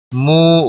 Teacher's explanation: واو مدہ ہے، 1 الف کے برابر کھینچ کر پڑھیں گے